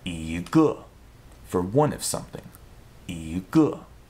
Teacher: when it comes before a fourth tone character, E's tone will change to a second tone.